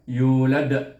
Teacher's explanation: yu baris depan dengan waw di sini sukun, maka kita baca dengan mat asli yu 2 harakat, kemudian lam di sini dengan dal yang mati.